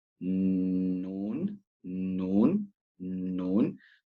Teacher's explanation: noon which is the tip of your tongue that is the gums of the top of your front teeth